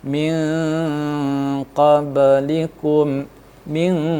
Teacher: Ikhfa karena huruf nun sukun atau nun mati bertemu dengan huruf qaf, ya. Cara membacanya agak sedikit samar dan dengung dan ditahan selama 3 harokat. Min qablikum, min, agak samar-samar seolah-olah ketemu langsung dengan huruf qa. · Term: hukum ikhfa